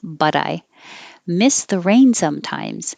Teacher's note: So I changed the T in but to a D because it connects.